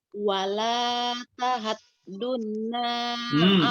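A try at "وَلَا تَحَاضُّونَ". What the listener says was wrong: Panjangin. Wala panjangin dulu.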